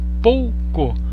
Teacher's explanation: a sua voz é mais alta quando você pronuncia o O do que quando você pronuncia o U? Pouco. Por isso que é um ditongo decrescente.